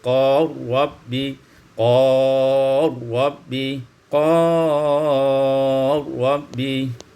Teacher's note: idghamul lam fil ra, diidghamkan lam pada ra menjadi qal rabbi, qal rabbi, qal rabbi.